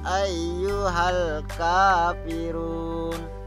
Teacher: lam sukun atau lam mati ya bertemu dengan huruf k harus dibaca jelas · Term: Alif Lam Qomariah